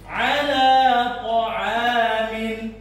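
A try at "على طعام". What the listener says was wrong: Bukan min ya. Ta'amin bukan min. Min.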